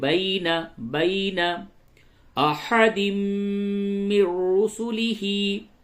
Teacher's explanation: یا ساکن سے قبل زبر ہے، یہ یا لین ہے، یا لین کو نرمی سے پڑھیں گے · تنوین کے بعد میم ہے، ادغام مع الغنہ ہوگا، اور نون ساکن کے بعد را ہے، اس جگہ پہ ادغام بلا غنہ ہوگا